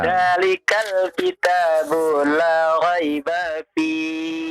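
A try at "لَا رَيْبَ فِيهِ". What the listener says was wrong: La raiba fi ba-nya tidak dipanjangkan. Bu-nya jangan dipanjangkan ya. Jangan dihentikan, biasa saja.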